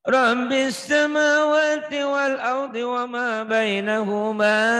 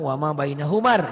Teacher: Karena matobinya ketemu alif lam samsiah jadi pendek kalau disambung. Kalau dihentikan tetap panjang, tetap matobi ya.